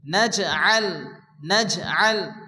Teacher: জিম সাকিন, জিম কলকলা অক্ষর হালকা ধাক্কা দিয়ে পড়তে হবে